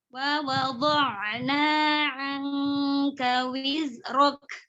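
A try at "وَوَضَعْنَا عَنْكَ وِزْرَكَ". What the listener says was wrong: Ini sofirnya hilang. Wizrok.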